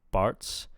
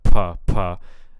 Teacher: it sounds like you're de-aspirating this sound.